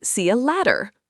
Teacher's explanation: See you later is often reduced to see you later in casual conversation. And in American English, the T sound often becomes a D sound, so it sounds like see you later.